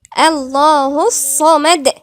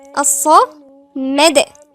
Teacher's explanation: الصمد في قلقله عند الدال من حروف القلقله